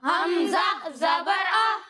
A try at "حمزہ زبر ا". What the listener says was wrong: اچھا پیارے بچوں، حمزہ زبر ا جھٹکا دے کر نہیں پڑھنا، ٹھیک ہے؟ اسے بغیر کھینچے بغیر جھٹکا دیے پڑھیں گے۔ حمزہ زبر ا،